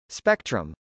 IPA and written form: spˈɛktrəm (spectrum)